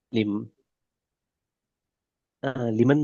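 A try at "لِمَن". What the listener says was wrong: நீங்க லிமன் ஓதுன, எனக்கு மார்க் அடிச்சு லன் அந்த மாதிரி கேட்டுச்சு, மிலன் கேட்டுச்சு.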